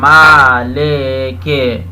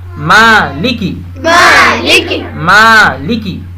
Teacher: عربی میں لے نہیں ہوتا ہے, لی. زیر ہے تو لی, لی. اس کے بعد کاف کے نیچے بھی زیر ہے تو کی, کی.